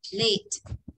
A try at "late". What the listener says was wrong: Đó không phải let ạ. Cũng không đọc là s ạ. Không thành dấu sắc đâu ạ. Mà hơi thả thế ạ.